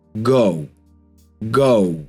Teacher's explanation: Last one, we've got this diphthong. But the diphthong, O, ends in a nice round O.